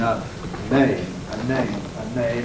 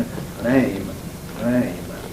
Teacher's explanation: The N again is stronger in a name, a name, a name. It's weaker and almost tapped in an aim, an aim.